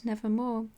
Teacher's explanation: the long O as the most sonorous vowel, in connection with R as the most producible consonant